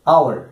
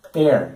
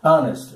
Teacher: Mas nessas 4 palavras-chave aqui, os Hs iniciais são mudos.